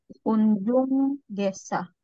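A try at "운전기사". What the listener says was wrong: Okay, so si letter N po dito sa baba ay followed ni letter G. So ang bigkas na natin ni letter N ay NG. Nga. So hindi po unjon gisa, kundi unjong.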